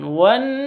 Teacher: Terus non tasydidnya bacanya gunnah, didengungkan bacanya. Jadi didengungkan wan seperti itu.